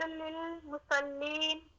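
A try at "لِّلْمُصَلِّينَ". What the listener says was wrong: مسلین نہیں ہے، مصلین واد ہے یہاں پر.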